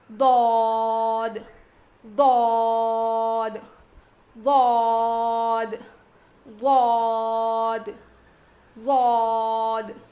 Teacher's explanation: زبان کی کروٹ کو اوپر کے داڑھ میں لگا کر پڑھیں گے